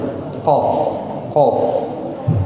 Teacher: pangkal lidah atau lidah bagian paling belakang itu hampir atau menyentuh nih apa namanya langit-langit yang lunak jadi langit-langit kan ada yang kalau disentuh ke sama lidah tuh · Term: qf